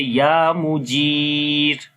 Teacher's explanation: if we stop on the ra, so it will be light ra